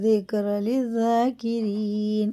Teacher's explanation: زال باریک ہوتا ہے، ذاکرین جاکرین نہیں پڑھیں گے